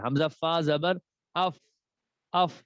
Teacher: اوپر والے دانت اور نیچے والے ہونٹ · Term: فا کا مخرج